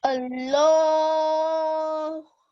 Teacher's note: You have to pause on Allah, right? And the lam is going to be thick.